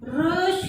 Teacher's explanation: रश बोलते ही मूर्धा स्थान से स्पर्श हो रही है, ये हो जाएंगे मूर्धन्य।